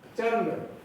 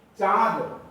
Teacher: जब आप चंद्र कहते हैं तो न की जगह पर हवा नाक से निकलती है, और चांद कहते हैं तो हवा नाक और मुंह दोनों से निकलती है।